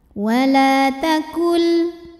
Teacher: karena ada Alif sebelumnya baris fathah maka huruf lam panjang dua harakat